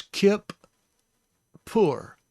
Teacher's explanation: And then the pei has also a dagesh inside, but this is more for the fact of it being doubled. This is a doubled letter, but it also carries the sound of the plosive pei.